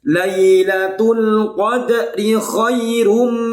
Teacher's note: Karena tanwin bertemu mim. Namanya idgham bi gunnah. Harus dibaca dengung yang lama.